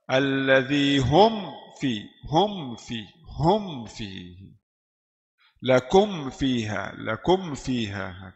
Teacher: rapat dua bibir dulu keluarkan makhraj mim suara mim kemudian Kemudian masuk di fa